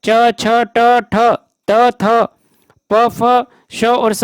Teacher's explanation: अघोष वर्ण में इनके उच्चारण में स्वर तंत्रियां झंकृत नहीं होती हैं। घोष वर्ण के अंतर्गत इनमें नाद का उपयोग होता है, अघोष में केवल श्वास का उपयोग होता है।